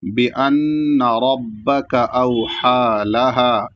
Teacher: آخر میں لہا کو ایک الف اور کھینچ کے رکیں گے